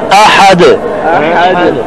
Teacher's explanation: حمزہ استفہام کا پیدا کرتے ہیں، یہ غلط ہے. حمزہ کو لمبا نہ کریں